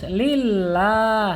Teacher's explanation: Ini adalah lam jalalah ya. Sebelumnya berharokat kasrah dan ini harus dibaca tipis atau tarkik